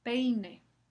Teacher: En el segundo ejemplo, peine. La semivocal se coloca después, se pronuncia después de la vocal normal E.